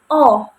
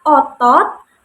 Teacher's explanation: Kalau vokal O ini lidah itu berada di madia bawah. Jadi madia bawah, kemudian menggunakan lidah bagian belakang. Jadi madia bawah dengan menggunakan lidah bagian belakang, dan posisi mulutnya ini semi terbuka.